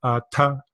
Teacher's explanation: But anytime you see the H after a consonant, it's an aspirate, which means there's a slight explosion of the breath, right? We blow out some air.